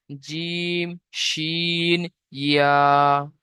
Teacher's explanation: জিভের মাঝখান এবং সেই বরাবর উপরের তালুর সাথে লাগিয়ে উচ্চারিত হয় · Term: 6 নম্বর মাখরাজ